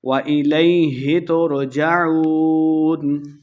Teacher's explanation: عین پیش واو عو، واو مدہ ہے، 2 حرکات لمبا کرنا ہے اور آخر پہ ہم نے وقف کا دینا ہے۔